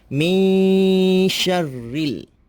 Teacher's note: Okey, mim dengan nun. Nun itu nun mati berjumpa dengan huruf shin. Dia menjadi ikhfa. Maka kita perlu baca dengan dengung sedikit.